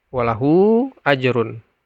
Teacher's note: panjangnya yang dan dibaca 5 4 sampai 5 harakat walahu ajrun jadi dia lebih panjang daripada Mad Silah qasirah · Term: Mad Silah thawilah